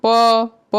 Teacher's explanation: प उच्चारण करने से देखो हमारा होठ दोनों होठ लग रहा है